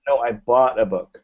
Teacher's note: Bought is what you're trying to emphasize here.